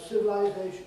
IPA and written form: ˌsɪvəlaɪˈzeɪʃn̩ (civilization)